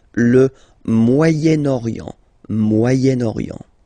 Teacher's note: So it's interesting here because normally if you would have only this word here, you would pronounce it moyen, moyen, okay? But then as you've got this vowel after, okay, you get to make the liaison between the two